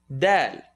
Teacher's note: tip of the tongue behind the top two teeth del that's not in the throat that's not your malone tongue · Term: dal